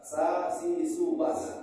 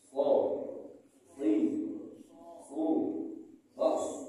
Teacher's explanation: Namanya huruf isti'la namanya. Pangkal lidah naik ke langit-langit. Jadi kalau sa itu lidah kita biasa saja, tidak usah diapa-apakan.